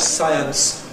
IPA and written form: ˈsaɪəns (science)